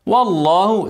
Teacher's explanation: ارقق الواو وافخم اللام